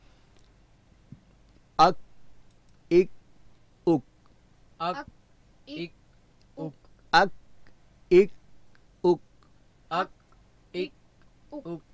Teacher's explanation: ٹھیک ہے، مزید زیادہ اس پر پریکٹس کرنے کی ضرورت نہیں ہے، لیکن اس کا مخرج تو ہم نے ذہن میں رکھنا ہے کہ حرف کاف کہاں سے ادا ہوتا ہے، اس کی آواز کہاں سے پیدا ہوتی ہے. تو زبان کی جڑ، اس کے مقابلے میں سخت تالو. ٹھیک ہے، تو پہلے جزم کے ساتھ ساکن کر کے اک اک اک اک اک اک اک اک اک اک اک اک.